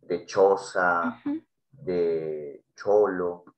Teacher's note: Mira, por ejemplo, acá se le llama alveopalatal a estos sonidos, en este caso es el sonido africado como ch